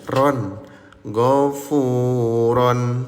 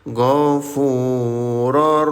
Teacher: Leburkan bunyi tanwinnya tanpa didengungkan alias leburkan saja ya.